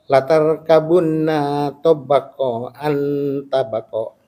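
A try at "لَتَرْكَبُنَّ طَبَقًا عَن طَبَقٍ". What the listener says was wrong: La tarkabun tabaqan an tabaq. La tarkabun. Nanya nggak panjang. La tarkabun tabaqan gitu. La tarkabun.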